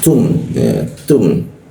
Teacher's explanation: ketika membaca huruf ta itu ada ee desisan sedikit ya